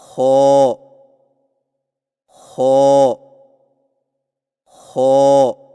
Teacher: خو کی ادائیگی میں زبان کی جڑ کو تالو کی طرف بلند کرتے ہوئے موٹی آواز میں پڑھیں